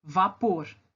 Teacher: A sílaba mais forte é a última. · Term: oxítona